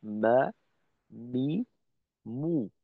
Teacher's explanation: বায়ের উচ্চারণে আমরা ঠোঁটের যে অংশটা ব্যবহার করব এর থেকে একটু বাহিরের অংশ ব্যবহার করব আমরা মিমের উচ্চারণে